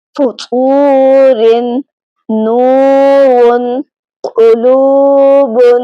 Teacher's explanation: پہلی مثال میں واو کا مخرج ادا کرتے ہوئے واو سے ملا کر ادا کریں تو تو بنے گا، جو آخر میں او کی آواز آ رہی ہے یہ جوف دہن سے ادا ہو رہی ہے۔ · اس کے آخر میں جو آواز او کی آ رہی ہے یہ بھی جوف دہن یعنی منہ کے اندر کی خالی جگہ سے ادا ہوگی۔ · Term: واو مدہ